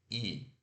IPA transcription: i